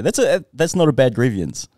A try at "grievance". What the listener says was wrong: Why do you keep saying grievance? Don't say the E.